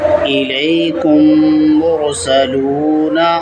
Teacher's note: میم ساکن کے بعد میم آئے تو میم کو میم سے ملا کر غنہ کے ساتھ پڑھا جائے گا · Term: ادغام شفوی